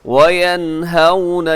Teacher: واو لین نرمی سے، لمبا بھی نہ کیجیے گا، جھٹکا بھی نہ دیجیے گا